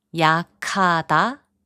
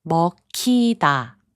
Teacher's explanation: 기역 and 히응 are combined to make a 키읔 sound · The fourth rule is called aspiration. When a consonant like 기역, 디귿, 비읍, or 지읒 is followed by 히응, they get combined and become a stronger consonant. 키읔, 티읒, 피읍, 치읒. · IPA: [부칸]